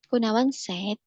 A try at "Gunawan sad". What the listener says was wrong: Ya, bukan said, tapi sad. Nah, sad. Sama kayak sedih kan? Sad.